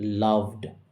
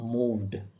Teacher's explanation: ভ সাউন্ড এর পরে ইডি রয়েছে, তাই ইডি এর উচ্চারণ ডয়ের মতো হবে, লাভড। মুভড, ভ সাউন্ড এর পরে ইডি রয়েছে, তাই ইডি এর উচ্চারণ হবে ডয়ের মতো, মুভড।